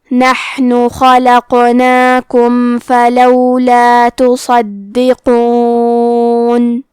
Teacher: صاد حروف التفخیم میں سے ہے، تو ہم یہ حرف کو بھاری آواز میں پڑھیں گے۔ دال پہ تشدید ہے، لہذا دو حرف کے برابر دال کو پڑھنا ہے اور حرف القاف کو موٹی آواز میں پڑھیں گے۔